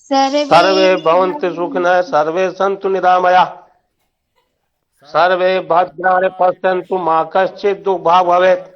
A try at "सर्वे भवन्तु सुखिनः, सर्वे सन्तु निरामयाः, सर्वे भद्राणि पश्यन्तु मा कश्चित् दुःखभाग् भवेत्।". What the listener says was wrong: थोड़ा रुक के भी बोलना है, ठीक है।